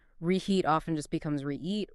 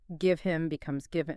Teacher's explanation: h frequently vanishes in fast connected speech, especially between words or syllables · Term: H likes to disappear